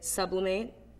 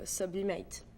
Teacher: just the emphasis is more on mate than sub